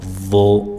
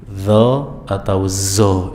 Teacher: Bedanya antara vo dengan zal adalah vo diucapkan dengan menaikkan pangkal lidah. Ya, lidah dekat dengan tenggorokan kita naikkan dan menempel ke langit-langit yang sejajar dengannya.